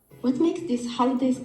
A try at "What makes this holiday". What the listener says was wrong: What makes? It's not clear. Yeah, it's very, very weak.